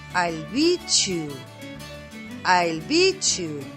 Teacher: When the fortis T is followed by the ya sound, turns into the ch sound. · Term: assimilation